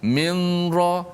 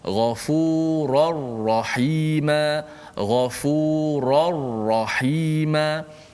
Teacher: Jangan minra, jangan ada unsur-unsur nun lagi. Kerana nun masuk secara total masuk dalam ra. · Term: idgham bila gunnah